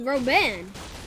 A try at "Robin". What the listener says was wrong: You don't say the N, it's just Robin.